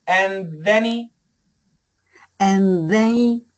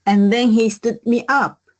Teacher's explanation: Get rid of the H. Cancel the H. Keep the TH.